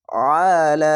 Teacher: চিকন চিহ্ন মাদ্দা আরজি তিন আলিফ টেনে পড়বেন